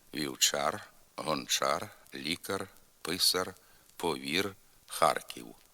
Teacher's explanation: звук р в літературній мові завжди твердий тільки на кінці слова і складу